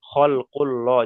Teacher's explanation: এখানে লা পড়া যাবে না, এখানে পড়তে হবে খলকুল ল, যেহেতু যেহেতু আল্লাহ শব্দের পূর্বে পেশ এসছে, যাবার অথবা পেশ থাকলে পুর।